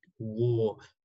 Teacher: It's deep. It's rounded. Okay, it's long, like war. Remember, British pronunciation, no R, American, yes, because it's rhotic.